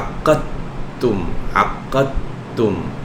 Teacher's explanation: এই দালের সাথে তায়ের ইদগাম হয়ে যায়, কারণ আদ আর আত দুইটারই মাখরাজ কাছাকাছি।